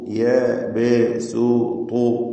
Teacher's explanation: ത്വാഇന് തഫ്ഹീം കൊടുക്കണം, ഖവിയ അക്ഷരമാണ്.